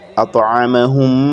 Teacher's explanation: we insert the first meme into the other, and we pronounce them together